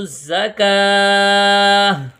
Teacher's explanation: تا کو ہا پڑھیں گے